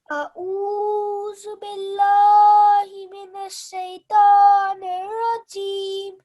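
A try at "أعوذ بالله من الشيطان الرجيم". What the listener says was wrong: Okay, so this ta is a thick and heavy sounding letter. So when you say this, round your mouth a bit more and produce a thick and heavy sound. Ta.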